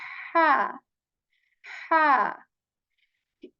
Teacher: you're kind of constricting again the muscles of your throat. They are tightening a bit · there is only air you are pushing out of your mouth. And how you're doing this is that you're kind of constricting again the muscles of your throat.